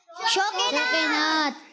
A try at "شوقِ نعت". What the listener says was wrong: کاف کے نیچے آپ نے زیر دینا ہے, یہ ہو جائے گا شوق نعت.